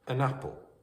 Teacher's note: The n links to the vowel sound of a at the start of apple.